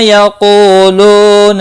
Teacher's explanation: ہے، دونوں کو 1 الف کے برابر کھینچ کر پڑھیں گے، کو لو دونوں واو مدہ ہیں، 1 الف کے برابر کھینچ کر پڑھیں گے